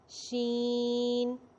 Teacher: اس کے معنی ہے پھیلنا، آواز مخرج میں پھیل جاتی ہے · سیم جیم والا مخرج ہے۔ جب بھی زبان کا سینٹر اوپر والے تالو کے ساتھ لگے گا تو پڑھا جائے گا شین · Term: صفت تفشی